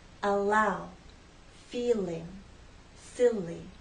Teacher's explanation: the tip of the tongue drops down to flow into a following vow sound